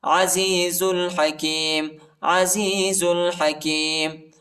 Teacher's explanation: ذا کو لام کے ساتھ ملائیں گے، الف نہیں پڑھا جاتا، الف پر حرکت نہیں